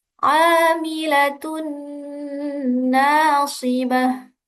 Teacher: Amilatun nasibah. Tunna dibaca dengung karena ada tanwin bertemu dengan salah satu huruf idgham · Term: idgham bighunah